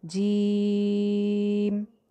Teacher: जीम को हमने कम से कम 2 से 3 अलिफ लंबा करना है